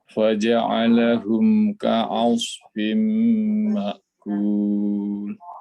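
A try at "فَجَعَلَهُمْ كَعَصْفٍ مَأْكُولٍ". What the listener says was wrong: Mumtaz murtafi', Masya Allah. Sempurna makros dan sifatnya ini.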